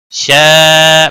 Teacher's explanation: شا بڑی مد ہے، تین الف کے برابر کھینچ کر پڑھیں گے